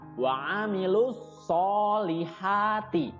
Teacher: atau alif lam yang bertemu dengan huruf sound ya Wa amilus alif lam nya tidak dibaca jadi langsung masuk ke huruf shod · so-nya panjang 2 harokat, kemudian ha juga panjang 2 harokat, ya. Cara membacanya seperti kalian menghela nafas. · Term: alif lam syamsiah, mad tabi'i